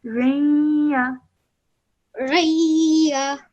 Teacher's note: Ra with a tanween underneath it, followed by a ya mushaddad, so producing a nasal sound in between for 2 seconds.